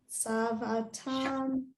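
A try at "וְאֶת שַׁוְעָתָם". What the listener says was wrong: That's a shin.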